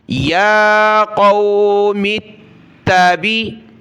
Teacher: تا کو سخت کیا تشدید کی وجہ سے